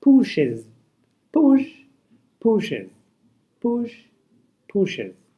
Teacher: We write pushes with es but we pronounce it as ez.